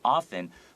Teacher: don't forget this T, you don't have to pronounce it. It's a silent T.